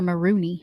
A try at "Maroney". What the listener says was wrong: It's Maroney. There's one O. You keep doing that, but that's not how you say her name.